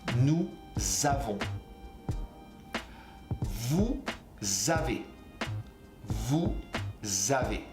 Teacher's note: this liaison will sound like a Z